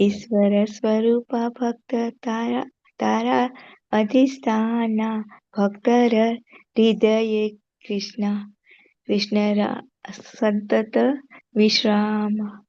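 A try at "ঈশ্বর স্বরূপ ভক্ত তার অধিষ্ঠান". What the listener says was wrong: very beautiful. Thank you, Mataji.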